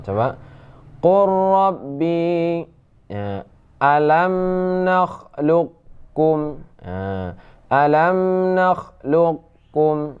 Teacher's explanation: Jadi qurrab seperti qaf ini bertasydid kepada ra, lam diidghamkan kepada ra ya, namun boleh juga dibaca idgham naqis yaitu sifat isti'la, qaf tetap ada